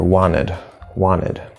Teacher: And then, of course, we notice I'm not saying the T here